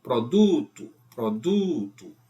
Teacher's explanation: paroxíma. Produto, produto, o do é mais forte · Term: paroxítona